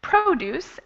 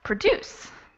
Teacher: So produce, the stress is on the first syllable, and produce, the stress is on the second syllable.